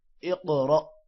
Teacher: قاف موٹا ہوگا، قاف پر قلقلہ بھی ہے، را بھی موٹا ہوگا اور حمزہ پر جزم ہے جس کی وجہ سے را جھٹکے کے طور پر پڑھا جائے گا۔